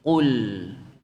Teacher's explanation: Nah, lam hati-hati jangan ditebalkan. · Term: lam tidak tebal